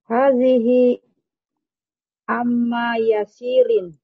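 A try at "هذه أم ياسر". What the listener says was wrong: Bukan, kan amma Ibu. Hati-hati, ini huruf hamzah Bu. Hadihi. Hadihi Ummu Yasirin. Kalau yang paman itu pakai ain Ibu ya, ammu. Kalau ini pakai hamzah berarti ummu. Hadihi Ummu Yasirin.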